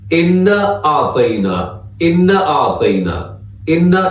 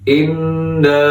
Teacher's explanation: انا اعطینا، انا اعطینا، انا، یہ صحیح نہیں ہے، بلکہ نون کے ساتھ الف بھی ہے تو ہم اس کو تھوڑا سا کھینچ کے لمبا کر کے پڑھیں گے۔ اس کو بولتے ہیں الف مدہ، ہم اس کو کھینچ کے تھوڑا لمبا کر کے پڑھیں گے انا، اور اس کے اوپر ایک مد بھی ہے، اس کو مد منفصل کہا جاتا ہے۔